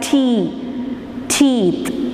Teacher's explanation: We block the air inside the mouth using the tip of the tongue against the alveola and then release it, and we produce the sound t, t and d. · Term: alveolar sounds